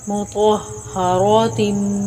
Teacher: طا اور را گرین دونوں حروف موٹے یعنی پر پڑھے جائیں گے